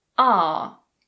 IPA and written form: ɑː (are)